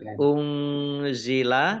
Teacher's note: nun sukun bertemu dengan huruf za, bacaan ikhfa, dibaca samar-samar